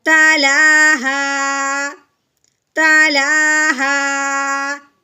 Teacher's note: الف سے پہلے جب بھی زبر آ جائے گی تو اس حرف کو ہم نے ایک الف کے برابر لمبا کرنا ہے، کیسے، ہا الف زبر ہا، تلاہا، وقف کی صورت میں الف جو ہے وہ ویسے کا ویسے ہی رہتا ہے، اس میں کوئی تبدیلی ہم نے نہیں کرنی، صرف اپنا لہجہ نیچے کو لے کے آنا ہے